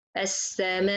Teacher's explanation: the Nabr here is to bring out the Hamza by collision, تصادم القوي, and not by contact, التلامس, because the mouth is busy with long time on mad. · the articulation point of the Hamza, the vocal cords, it should to be hit very strong each other, and you make the Hamza clear